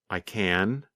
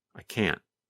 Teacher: When we say the positive form, we pronounce the letter N longer. The N sound, n, n, n, lasts longer than in the negative form.